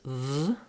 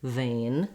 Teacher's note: Watch your V sound, that you have your upper teeth and your lower lip together and the sound continues